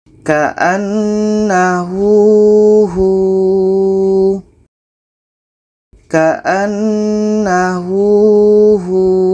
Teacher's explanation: Jadi di sini ada waw mati sebelumnya berbaris di depan, maka hu ini dibaca panjang karena ada waw mati.